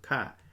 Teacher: it's Kha with a falling tone. So, short falling tone